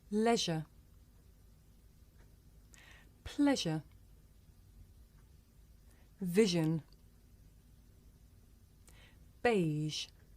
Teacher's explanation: Now the voiced fricative zh. This is a voiced consonant. It's pronounced zh.